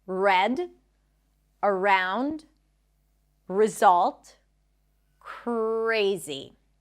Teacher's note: the tongue pulls back. There is no tap. It doesn't touch the upper palate and the lips round.